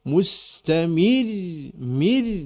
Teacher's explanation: mir dan tipis, mir karena sebelumnya kasrah.